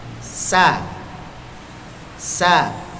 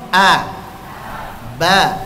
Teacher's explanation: Perbedaan pertama, kalau hamas suaranya samar, sedangkan jahr suaranya jelas.